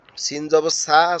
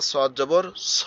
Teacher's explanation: সিনটা একটু পাতলা ঝিরঝিরে আওয়াজ হবে, আর সটা একটু মোটা হালকা আওয়াজ হবে।